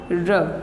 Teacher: प्रकंपित यानी जिसका उच्चारण करते समय कंपन उत्पन्न होता है, तो वो है हमारा र।